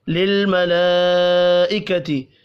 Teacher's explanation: بڑی مد کو 5 الف کے برابر کھینچ کر پڑھیں گے